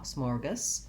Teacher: the GAS syllable is short and unstressed, has the schwa